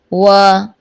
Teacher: وا دونوں ہونٹوں کو گول کر کے ادا ہوتا ہے